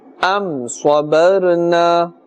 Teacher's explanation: mim sakin is followed by a sad, and therefore idhar shafawi is taking place, no ghunna will take place. Sad is part of the huruf musta'aliya, and therefore we must pronounce it with a thick tone, a full mouth.